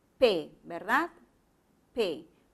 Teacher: Este fonema, como te has dado cuenta, tiene que articularse con un cierre total de los labios. Los labios se juntan y luego se abren rápidamente cuando tú lo acompañas con una vocal.